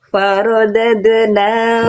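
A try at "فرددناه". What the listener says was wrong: Ro-nya tebalkan dengan faro. Ro ketika berharokat fathah itu harus dibaca tebal, berarti angkat pangkal lidahnya, jangan sampai cuman faroda, tapi faro, angkat.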